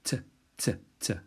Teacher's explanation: Teth is the T sound, but the tongue is further down on the teeth, so it's a sort of softer T sound. So it's to be distinguished from tau.